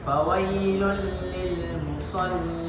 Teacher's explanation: huruf lam yang kedua berharakat sukun dan dia harus dihidupkan sifat bainiyahnya, yaitu mengalir sedikit pada makhraj